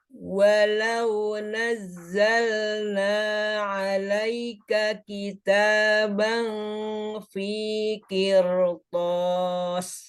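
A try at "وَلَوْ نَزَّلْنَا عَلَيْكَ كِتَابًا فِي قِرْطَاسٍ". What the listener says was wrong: Yang ini bacanya harusnya tipis apa tebal? Tebal, tapi dibaca tipis. Kadang-kadang di otak kita benar, udah tebal, tapi ternyata mulutnya nggak sinkron.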